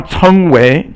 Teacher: So that's second tone. Both characters are second tone.